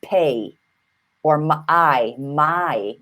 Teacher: There's a double-barreled vowel called a diphthong, and that's a, pay, or my. You hear the ah and then the e, right?